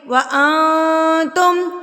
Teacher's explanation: حروف اقفا میں سے تا آ گیا اور نون ساکن ہے، تو نون ساکن پہ اب ہم کیا کریں گے؟ اقفا کریں گے